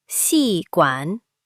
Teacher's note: Second tone rising, fourth tone falling.